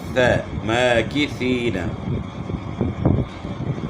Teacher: سامنے والے اوپر کے 2 دانتوں کے کناروں کے ساتھ زبان کی نوک لگائیں گے تو ثا اپنے مخرج سے ادا ہوگی